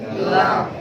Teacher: जबान का किनारा एक जाहिद से लेकर दूसरे जाहिद तक।